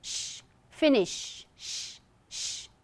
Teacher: no vibration. So this is unvoiced consonant sound.